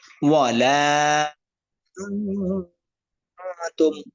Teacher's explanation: উক্ত নুন সাকিন এবং তানবিনকে নাকের ভিতর লুকিয়ে গুণনা করিয়া পড়তে হয়। যেমন ওয়ালা তুম, এই যে আং, নুন সাকিনের পরে তা আসছে। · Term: ইকফা